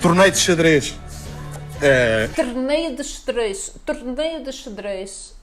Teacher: dá a impressão que eles falam com a boca mais fechada